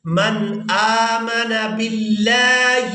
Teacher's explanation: لفظ اللہ کے لام کو باریک ادا کریں گے